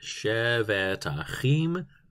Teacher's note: the T is aspirated, because Hebrew is a very guttural and in-your-face and explosive consonant kind of language